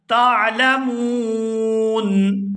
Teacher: ما لا تعلمون، اور یہاں وقف کریں گے اور وقف کی صورت میں نون ساکن ہو جائے گا، اور نون ساکن ہونے کی وجہ سے یہاں پر مد ہوگی تو کھینچتے ہوئے یہاں پر وقف کیا جائے گا